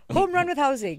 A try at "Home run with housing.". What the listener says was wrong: Don't push it like that, yaar. It looks so fake.